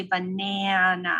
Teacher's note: Now you can argue with me, guys, and multiple programs teach this more than one way, but this A is affected by the N that follows it, right? I say banana, that's a nasalized A.